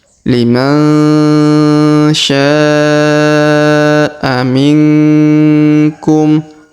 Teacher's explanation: Huruf nun sukun bertemu ku atau ka di sini, maka didengungkan dan disamarkan